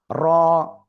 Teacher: জিহ্বার আগার পিঠ তার বরাবর উপরে তালুর সাথে লাগিয়ে মোটা আওয়াজে এক আলিফটা নিয়ে উচ্চারণ করতে হবে।